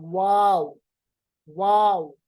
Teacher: वाव को पढ़ते वक्त जो होंठों के दरमियानी हिस्सा है, यानी बीच वाला हिस्सा, वो खाली रहता है और साइड वाले हिस्से आपस में मिल जाते हैं। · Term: गैर मद्दा वाव